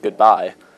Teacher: iambic means the stress is on the second syllable